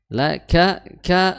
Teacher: inna ya tasdid di huruf nun ya inna ditahan dulu kemudian laka ya la dia sudah kita sebutkan tadi la ka ka makhrajnya adalah di ee tengah apa di ujung apa ya di pangkal tenggor pangkal lidah bertemu dengan perbatasan antara langit-langit yang bertulang atau langit-langit yang keras dengan langit-langit yang lunak dan itu pertengahannya ka kemudian cara mengucapkannya adalah dengan cara kita mengeluarkan atau ee sedikit mengeluarkan nafas ya, sedikit mengeluarkan nafas. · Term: huruf kaf